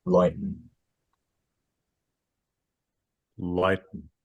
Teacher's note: I feel like you've got a real diphthong right up top. I guess that's a flap for the T, or if it isn't, it sounds not like, it doesn't sound like you're making a hard voiceless stop.